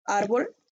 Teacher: y suena más fuerte en la penúltima